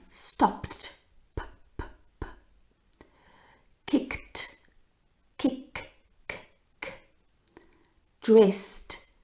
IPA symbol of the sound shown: t